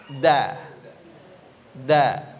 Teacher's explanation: Maka ujung lidah kita kena gigi serinya, kemudian kena juga daging yang di belakangnya. Maka bunyinya adalah da. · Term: huruf dal